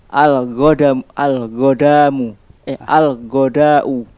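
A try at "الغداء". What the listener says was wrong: Al-ghada'u. Naam, bukan mim itu. Ulang sekali lagi.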